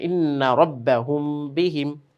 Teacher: মিম সাকিনের ইখফা। মিম সাকিনের ইখফার কারণে এটি একটি গুন্না হচ্ছে এখানে